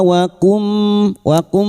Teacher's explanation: huruf lintaituka ataituka wakum wakum nun cukup bertemu mim idgam bighun masuk ke huruf mim dan mendengung selama tiga harakat